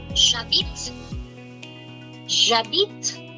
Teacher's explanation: Two vowels in front of each other. What will be the consequence? First vowel gets cancelled, takes the form of an apostrophe, join the word.